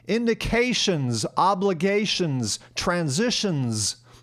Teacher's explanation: All pronounced as if the word ends with a Z.